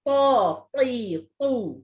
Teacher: Yang ta dia bersifat isti'la. Isti'la tu maksudnya pangkal lidah kena diangkatkan